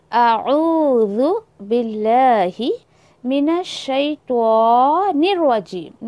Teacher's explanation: नून को फ़ौरन उठाकर जो है वो रॉ के ऊपर मर्ज करिए।